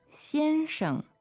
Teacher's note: And then the word for Mr., it comes after the surname. It is, 先生 so that's Xian, first tone, and then Sheng, neutral